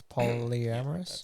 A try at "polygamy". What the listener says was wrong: No, like polygamy. You said it like you just slurred the whole word together last time.